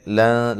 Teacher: لام کو باریک، اور یہاں نون ساکن کا اخفا مع الغنہ ہے، باریک اخفا ہے